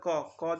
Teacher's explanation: যখন বলি ওই তালুর সাথে শেষ দিকে লাগে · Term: স্পৃষ্ঠ ব্যঞ্জন